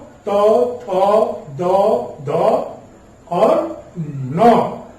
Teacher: दांत और जीभ के स्पर्श से निकलने वाली ध्वनियां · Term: तवर्क